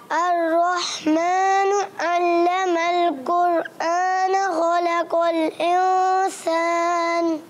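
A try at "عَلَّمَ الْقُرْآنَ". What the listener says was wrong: अर्रहमानु अल्लमल कुरआन, अर्रहमान में हा की अदायगी और क्लियर करनी है, और अल्लमल कुरआन हमजा है, इसको ऐन से नहीं बदलना।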